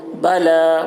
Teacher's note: با کے اوپر زبر ہے، زبر کو جلدی پڑھیں، تھوڑا بھی نہ کھینچے۔ · لام کے اوپر کھڑا زبر ہے، کھڑا زبر برابر ہوتا ہے الف مدہ کے، اس لیے کھڑا زبر کو ایک الف کے برابر کھینچ کر پڑھیں گے۔